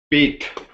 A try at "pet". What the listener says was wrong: So not Pete. I'm hearing you say this. I want to hear that I sound. actually between I and E. It is between those sounds.